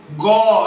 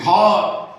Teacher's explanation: এগুলো হচ্ছে ঘোষ, যেগুলো স্বরতন্ত্ররা হালকা কাঁপে, যেমন গ এর মধ্যে কাঁপছে, ঘ এই নলির স্বরতন্ত্রীরা হালকা কাঁপছে, তাহলে 3 4 5 ঘোষ।